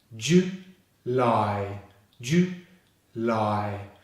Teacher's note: The last syllable starts with the L consonant and finishes on the I diphthong